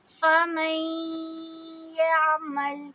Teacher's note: آئین کو نرمی سے پڑھیں گے، اس پہ جھٹکے کی آواز نہ آئے